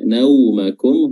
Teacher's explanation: huruf wau di sini Sukun dan dia memiliki sifat Lin sifat yang lunak lentur